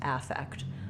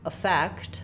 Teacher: So it's the same second syllable, but in this case, because it's the noun, the first syllable gets stressed